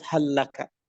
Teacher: Dan hadirinullah, di sini kita mengetahui bahwa pengucapan hal adalah dalam keadaan idgham dikarenakan tamasul. Ketika bertemu dengan lam, maka dia tamasul, yaitu lam bertemu dengan lam.